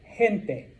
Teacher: Before an E or an I in Spanish, the letter G sounds like an English H.